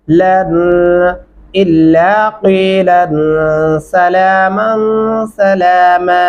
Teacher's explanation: क़ाफ गले से अदा करेंगे